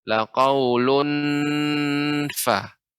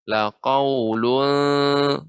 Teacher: Kalau ikhfa, nunnya tidak lengket ke langit-langit.